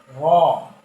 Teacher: জিহ্বার আগার উল্টো পিঠ উপরের তালুর সাথে লাগিয়ে